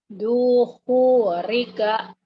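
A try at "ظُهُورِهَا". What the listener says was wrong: Do-nya agak pecah. Zuhurika. Zuhurika.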